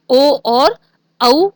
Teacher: सूत्र है इसका ओ दौतोः कंठ ओष्ठम, और कंठ ओष्ठ से बोले जाने वाले वर्ण हैं ओ और औ वर्ण